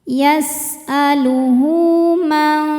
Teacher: Sebab ada ha dhamir yang diapit dua huruf hidup dan setelahnya bukan hamzah. Maka ha dhomir panjang dua harakat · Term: mad shilah qashirah